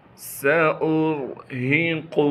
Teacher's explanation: سین میں سیٹی ادا کریں گے کیونکہ سین سیٹی والے حروف میں سے ہے · سین کے بعد الف لکھی ہوئی ہے، لیکن الف پر پیش آنے کی وجہ سے یہ الف ابھی حمزہ بن چکا ہے، لہٰذا حمزہ کو را سے ملائیں گے کیونکہ را ساکن ہے۔ را ساکن سے پہلے حمزہ پر پیش آنے کی وجہ سے را کو موٹا کر کے پڑھیں گے